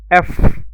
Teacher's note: উপরের দাঁত নিচের ঠোঁটের সাথে মিলিয়ে পড়তে হবে